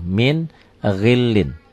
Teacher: Itulah idhar. Idhar dibaca jelas tanpa ditahan, tanpa dengung.